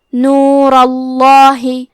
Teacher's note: تو ہمیں حرف اللام کو موٹی آواز میں پڑھنا ہے،